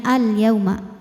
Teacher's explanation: Jadi ini hukumnya tetap alif lam qamariyah. Karena alif lam menghadapi huruf qamariah yaitu ya maka dibaca dengan jelas atau disebut dengan izhar qamari.